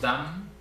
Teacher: Tenemos dam, en donde la M es realmente la que muestra el ascenso inclusive, ¿no? La A tiene un tono bastante nivelado y es la M la que nos muestra que es un tono ascendente. No llega a las M's nasales del tigre, pero tiene bastante presencia aquí también esta M coda, ¿no?